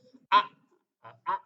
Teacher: a itu ada di pangkal tenggorokan paling bawah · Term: huruf hamzah